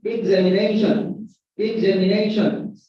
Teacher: the primary stress is on 4 syllable, and the secondary stress is on the second syllable. So this is pronounced examination.